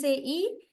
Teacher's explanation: E is a high vowel, because when we say e, our tongue is almost touching the hard palate.